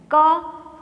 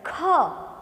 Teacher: ક સરળતાથી બોલાશે, ખ થોડુંક વધારે એમાં હવાનો જથ્થો જોશે, હવા વધારે બહાર નીકળશે. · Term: મહાપ્રાણ